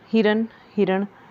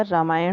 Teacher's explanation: अगर वर्ड में र है र तो वहां पर न का साउंड नहीं आता अण का साउंड आता है